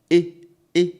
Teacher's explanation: So not the diphthong, but the E, just the E sound, because this is a monophthong. It's just one sound. It doesn't move from one sound to the other.